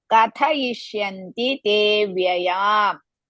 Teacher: Katha is ka is hrisva, tha mahaprana hrisva, yi hrisva, sha half, ya hrisva, and then zero is there, na it is thi hrisva, te is dirgha, then you can drag little because there is an s mark.